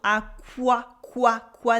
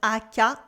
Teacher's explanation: We have a wa sound. Aqua, qua, not aka, aqua.